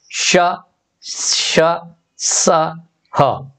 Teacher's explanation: जिन वर्णों का उच्चारण करने के लिए वायु को धीरे धीरे रोककर रगड़ के साथ निकाल दिया जाता है उन्हें ऊष्म या घर्षक कहते हैं।